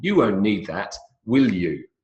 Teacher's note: These are all declarations. And I'm not really asking a question. Downward intonation.